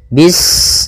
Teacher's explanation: Bismillahirrahmanirrahim pada bacaan bis ini sempurnakan huruf sinnya ketika sinnya sukun ini ada sifat safir dia harus kita alirkan nafasnya bis nah seperti itu sempurna baru baca Mi Bismi Bismi usahakan